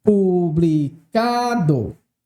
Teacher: penúltima sílaba publicado também é paroxítona veja publicado mais uma vez a tonicidade recaiu na penúltima sílaba